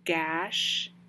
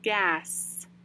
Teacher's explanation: gash ends with the shh and gas ends with the s